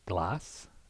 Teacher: So phonetically what we're talking about here is the typewriter A, that's a low central vowel